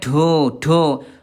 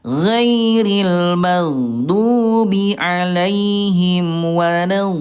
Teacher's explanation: Do tidak ada udara ya.